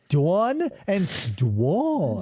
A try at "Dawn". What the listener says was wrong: No, it's not Dwan. It's Dawn. D-A-W-N. Dawn. Dawn. Dawn.